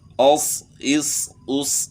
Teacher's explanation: یہ 3 حروف صفیری ہیں، ز سین صاد. تو یہ صفت جو ہے نا ان کے اندر سیٹی کی جو صفت ہے یہ ادا ہونی چاہیے